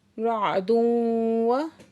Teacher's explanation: तनवीन के बाद वाव मुशद्दद है, इदगामी जरमलून है। रअदुन व माल गुन्ना के साथ है।